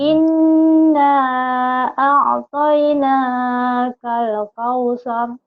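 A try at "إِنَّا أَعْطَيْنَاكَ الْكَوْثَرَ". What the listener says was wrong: Inna a'tainakal kautsar. Ujungnya sa ya. Kautsar. Bukan kausar, kautsar. Lidahnya kayak cadel, cedal ya, kausar. Inna a'tainakal kautsar.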